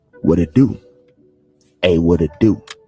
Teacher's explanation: the T is flapped around to a D. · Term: flap T sound